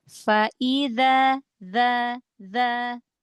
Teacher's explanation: zal gesekan sedikit, ujung lidah keluarkan. Ujung lidah gesekan sedikit dengan ujung gigi seri atas.